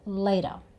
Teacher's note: So it ends with the schwa sound. And the T sound is sort of somewhere between a T and a D. · we don't tend to say the R sound, at the end, so this becomes 'latuh'. So it ends with the schwa sound.